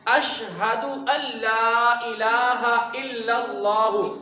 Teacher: آپ نے اس طرح پڑھنا ہے اشہد، ہا اس میں ظاہر کرنا ہے